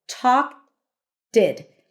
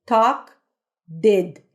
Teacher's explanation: In English, the T's and D's are pronounced just with the tip of the tongue.